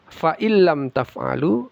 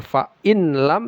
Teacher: Kemudian ayat berikutnya fa illam taf'alu, tidak dibaca fa in lam tapi fa illam. Idgham bila gunnah, dimasukkan tapi tidak didengungkan